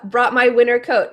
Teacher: If you watched the recent pronunciation video that I did about NT, you will you'll notice that the pronunciation here, we can say winner, no T, or we could add the T, both are fine.